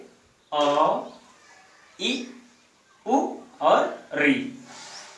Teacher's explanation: इनके बोलते वक्त, उच्चारण करते वक्त हवा मुंह में कम समय के लिए झटके से निकल जाती है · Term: ह्रस्व स्वर